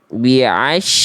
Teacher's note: Ya, shin itu dibaca tipis, jangan sya.